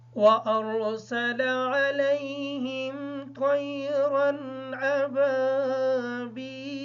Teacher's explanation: را کو پر پڑھیں گے اس وجہ سے کہ را خود ساکن ہے اور یا را محتاج ہے حمزہ کے۔